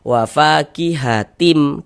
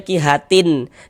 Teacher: Ini bunyi tanwinnya masuk ke huruf mim, melebur ke huruf mim. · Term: idgham bighunah